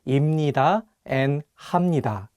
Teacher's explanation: This makes them easier to pronounce. So if you pair 비읍 with 니은, you can pronounce 비읍 as 미음. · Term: nasal consonant sounds